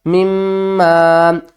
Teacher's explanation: میم کو میم سے ملائیں گے، میم مشدد ہے، گھننا کر کے پڑھیں گے